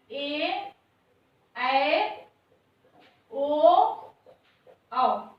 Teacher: ये हमारे दीर्घ स्वर होते हैं और इनके उच्चारण में 2 मात्रा का समय लगता है।